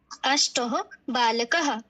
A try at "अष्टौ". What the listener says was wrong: यहाँ पे विसर्ग नहीं लगाना, बोलो अष्टौ।